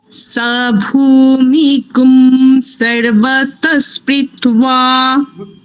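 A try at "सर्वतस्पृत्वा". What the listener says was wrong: পৃত্বা নয়, কি হবে? প্রেত্বা। একার, একার মিগুং নয়, মিগুং। মিগুং দীর্ঘ ইকার নয়, মিগুং হ্রস্ব ইকার, ঠিক আছে? সাভূমি।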